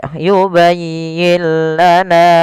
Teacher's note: Idgamnya adalah nun sukunnya diidgamkan ke huruf lam. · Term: idgham bila ghunah